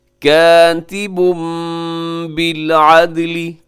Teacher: کاتب پہ تنوین ہے اور تنوین کے بعد با ہے تو یہاں اقلاب ہوگا۔ کاتب بالعدل، دال قلقلہ کیجیے گا۔